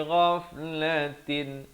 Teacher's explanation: ghain di hujung kerongkong